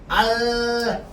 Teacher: 공기는 어디로 나오는데? 혀의 양옆으로 흘러나와요. 이래서 흐름이라고 합니다. · 혀 끝을 잇몸에 댄 채 공기를 혀의 양옆으로 내보내면서 내는 소리를 유음이라고 합니다.